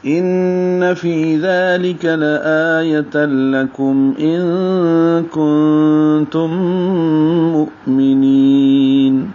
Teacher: ان میں غنہ کریں گے، آواز ناک کے بانسے میں لے جائیں گے. فی یا مدہ ہے، 2 حرکات لمبا کریں گے.